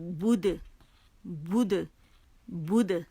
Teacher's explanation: ٹھیک ہے، با پیش بو، با کے مخرج پہ جائیں گے، اسے پکڑیں گے، اسے گولائی دیں گے